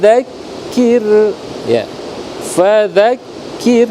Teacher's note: ro tipis karena huruf sebelumnya Kaf itu berharakat kasrah